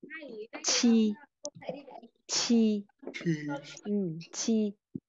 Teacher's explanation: Rồi, còn âm quy thì cũng giống như thế, nhưng mà bật hơi. Vậy thôi, cũng là chờ nhẹ nhưng bật hơi